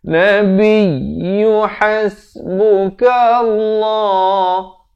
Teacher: Nabiyyu ya bersabdu, Nabiyyu hasbuka Allah. Lafz jalalah di sini dibacakan dengan tebal 2 harakat.